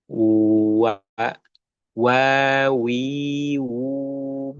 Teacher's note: Karena huruf wau tidak sampai menempel bibir. Sekalipun dia huruf dua bibir tapi bibirnya mencucu. Mencucu itu manyyun.